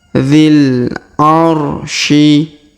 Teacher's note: Inda dzil. Huruf dzi langsung sambung ke alif lam qamariyah. Alif bengkoknya atau alif maksurah di depannya tidak dibaca.